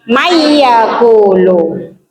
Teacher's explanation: Bunyi nonnya dimasukkan ke dalam iya sambil berdengong sekitar 2 harokat.